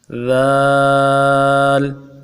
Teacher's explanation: زبان کا سرہ سامنے والے دانتوں کے سرے کے ساتھ جب لگے گا تو ذال ادا ہوگا۔ نرمی کے ساتھ ادا کرنا ہے، جماؤ کے ساتھ، سختی کے ساتھ نہیں ادا کرنا۔